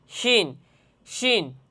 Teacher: এই শিন হরফটিও জিহ্বার মধ্যখান, তার বরাবর উপরের তালুর সঙ্গে লাগাইয়া শিন হরফটি উচ্চারণ হবে